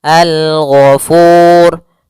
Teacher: Dan di sini ada huruf yang diwaqafkan adalah huruf ra, maka kita ada tambahan hukum yaitu hukum ra tafkhim. Ra yang dia dibaca dengan tebal.